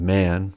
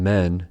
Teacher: man to distinguish E and A in men and man respectively the vowel in man is a lot longer than the vowel in men men has a pure a sound but man has a modified